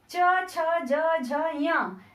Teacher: चा वर्ग में च छ ज झ य, इन्हें हम बोलेंगे तालव्य